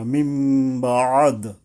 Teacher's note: বদল করে নুনকে মিম ধরে পড়া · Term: ইকলাব